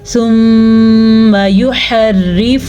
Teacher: ہا الٹا پیش ہو اس کو سینے سے بھی نکالیں گے اور الٹے پیش کی وجہ سے کھینچ کے بھی پڑھیں گے